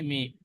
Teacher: দুই ঠোটের শুকন অংশ মিলিত হয়ে উচ্চারিত হয়